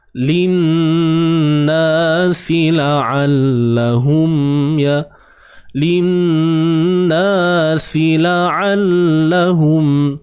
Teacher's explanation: Na ni dua harakat. Dan dengung jangan lupa.